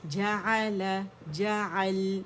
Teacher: لام کا توسط شو کریں گے، پارشلی آواز چلے گی